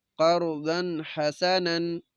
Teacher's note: ضاد کے اوپر دو زبر نون تنوین، بعد میں حا ہے، تو ہم نے غنہ نہیں کرنا، اس کو اظہار کہتے ہیں، غنہ کے بغیر پڑھنا۔